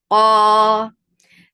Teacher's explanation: Qaf is heavy, and it is the most heaviest level to make any letter heavy.